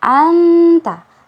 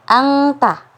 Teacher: Jadi ketika kita ketika nun sukun bertemu dengan huruf ta, berarti dibacanya anta. Suara kita dikeluarkan dari rongga hidung, kemudian makhraj hurufnya itu langsung berada di huruf ta sehingga mengeluarkan bunyi anta seperti itu.